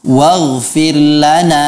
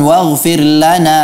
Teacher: kata wafirlana akan tetapi agak berlebihan dalam memberikan metpak dha-gold firlana seharusnya dia itu kan hanya Mad Thobi'i diberi dua harakat saja